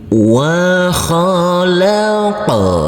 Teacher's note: Huruf qaf wajib kita pantulkan untuk huruf qaf yang bersukun ini karena ini adalah bacaan qalqalah